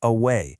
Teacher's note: In the word away, the stress is on way, so the mark goes before it, away.